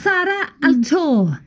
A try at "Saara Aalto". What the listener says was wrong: In Finnish, we would say Saara Aalto. Long A.